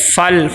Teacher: یہاں پہ قلقلہ نہیں ہونا چاہیے، آواز رک جائے